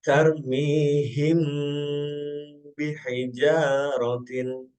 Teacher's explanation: Nah, huruf ikhfa syafawi yaitu hanya satu, huruf ba. Cara membacanya, yaitu dengan suara yang samar antara mim dan ba pada bibir. Kemudian ditahan kira-kira 2 harokat atau ketukan, seraya mengeluarkan suara ikhfa dari pangkal hidung.